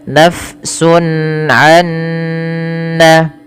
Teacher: Masuk secara utuh soalnya nunnya ke nun karena dia sama makhrajnya. · huruf ain merupakan huruf halqi yaitu yang keluar dari tenggorokan. Maka hukum tajwidnya dikenal dengan izhar halqi. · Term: idgham bighunah